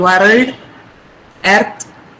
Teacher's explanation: Telugu speaking people have the tendency to stress the r sound in the words.